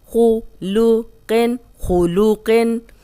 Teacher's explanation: اب خو موٹا، قوف موٹا، لام باریک